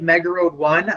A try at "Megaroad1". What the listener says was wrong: You said Nega MEGA.